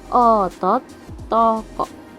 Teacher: vokal O madia bawah belakang